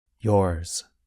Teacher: So the sound of Z is not as strong or as long as in a word like zero. Instead, it's more like a Z with a little s at the end.